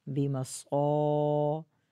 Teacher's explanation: آگے بِمَصَابِيحَ، بازر بی، میم زبر ما، صاد الف زبر صا. بی اور میم دونوں کو نہیں کھینچنا ہے. بیماسقا دونوں غلطیوں سے بچنا ہے.